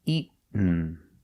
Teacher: Pronunciation, not eaten, but eaten. You go to a stop T, eat, and you fall to the N.